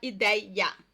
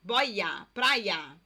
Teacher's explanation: Na hora de falar, você provavelmente fala esse i 2 vezes.